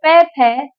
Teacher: जब आप बोलेंगे प फ तो हम ओष्ठ से बोलेंगे।